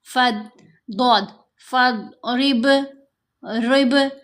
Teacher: اب یہاں با پر کلکلا، را کو باریک پڑھیں گے، با پر کلکلا کریں گے۔ ضاد کی آواز موٹی ہے، یہ حروف مستعلیہ میں سے ہے۔